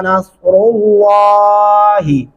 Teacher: लाम को मोटा पढ़ेंगे और इस हा को खींचना नहीं है।